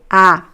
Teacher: It's a very open sound. In Portuguese, the vowel A, Brazilian Portuguese, is almost very open.